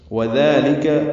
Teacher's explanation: واو ہونٹوں کی نہ تمام گلائی سے، ذالک میں ذال نرمی سے ادا کریں گے، دو حرکات لمبا کریں گے.